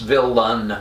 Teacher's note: i more likely pronounce villan with an uh sound of schwa rather than an e